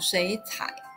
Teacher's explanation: the tone of shuǐ changes to the second tone, making the sound shuǐ cǎi. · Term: basic third tone change